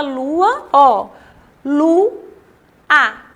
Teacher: É o encontro de duas vogais. Mas quando são pronunciadas, ficam em sílabas diferentes. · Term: hiato